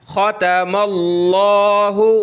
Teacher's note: लफ्ज़ अल्लाह से पहले ज़बर आ जाए तो लफ्ज़ अल्लाह को मोटा करते हैं। ये मीम के ऊपर ज़बर है तो यहाँ मोटा करके पढ़ेंगे।